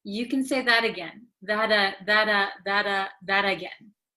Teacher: this T sound in that kind of sounds like a soft D okay because it is between an A and another a so